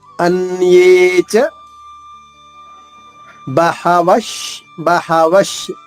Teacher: ఆ విశార్గ బదులు దాని తర్వాత పదంలో ఏ ష ఉందో అదే ష పొల్లుగా వస్తుంది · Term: విసర్గ ఉచ్చారణ